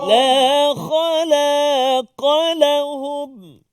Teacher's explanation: Jadi nak tebalkan kha dengan qaf, lam tersepit kat tengah.